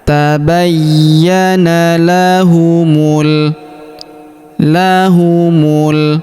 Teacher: Huruf ya kita tahan dan kita tekan karena terdapat tanda tasdid di atasnya.